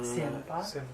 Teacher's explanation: So when you see Z, forget Z. It's low tone S.